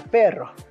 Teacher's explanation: en español estándar tiene un vibrante múltiple alveolar · dos se producen manteniendo una tensión muscular considerable en la lengua la vibración de la lengua está causada por la fuerte presión de aire detrás de la lengua